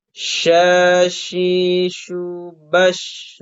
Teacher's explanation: Makanya huruf shin itu tidak menempel ya, dengan si tengah lidahnya itu nggak menempel dengan langit-langitnya gitu. Karena memang pengucapan shin itu ada udara yang menyebar di area mulut kita.